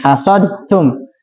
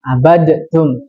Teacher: maka langsung ditasdidkan diidgamkan ke huruf setelahnya